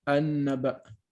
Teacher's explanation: You don't say anin naba. If you connect it to the previous word, the Hamza becomes invisible or skipped.